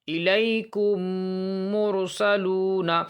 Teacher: میم ساکن، یہ جو میم ساکن ہے اس کے بعد دوسرا میم آ جائے، ہے نا، تو اس صورت میں میم کو میم سے ملا دیں گے، میم کو میم سے ملا کر غنہ کے ساتھ پڑھا جائے گا۔ اور یہ جو غنہ ہوگا وہ ہونٹ اس وقت ملیں گے، غنہ کو کرتے وقت ہونٹ ملیں گے، اس لیے اس غنہ کا نام ہے ادغام شفوی۔